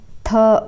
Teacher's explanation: अघोष महाप्राण होता है